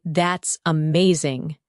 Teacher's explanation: When you say that's amazing, your tone rises with excitement. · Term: rising tone